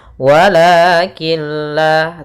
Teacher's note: membacanya masukkan huruf nunnya atau tanwinnya ke huruf lam sehingga Nun suara nunnya hilang dan tinggallah suara lamnya wakilla tapi dia tidak disertai dengan gunah tidak ditahan wakilla tidak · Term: idgham bilagunah, idgham bila gunnah